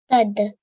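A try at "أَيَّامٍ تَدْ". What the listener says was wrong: So ayyam tad. Ayyam tad. So when you say the ya, make sure you don't make it long. You just after the ya, you straight join onto the meme. Ayyam tad.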